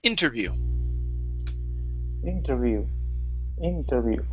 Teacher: our stress is at the very beginning here